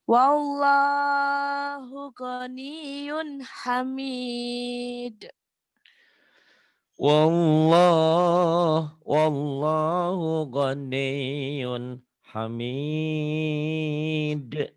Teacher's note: yun ini idhar, tanwin ketemu ha